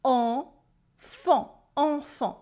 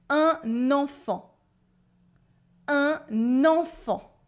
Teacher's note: you have a silent T at the end and two nasal sounds. En and fan.